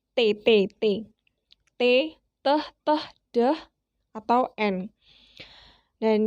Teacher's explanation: lidah kita menyentuh pada gigi depan bagian atas